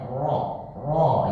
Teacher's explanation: tapi ada lahjah Banten mereka bacanya ro ro ya sangat tebal dan itu dibolehkan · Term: ro Banten